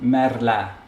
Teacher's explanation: there's too much alveolar action going and that the r is stronger than the l